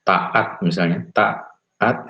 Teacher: Mungkin yang perlu dibahas sedikit ada glotal di situ ya, kita biasanya menyebut glotal stop ya, bunyi hamzah ya, misalnya pada kata taat misalnya, taat ya, di situ ada bunyi hamzah